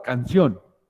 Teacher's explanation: cuya sílaba tónica es la última sílaba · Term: palabras agudas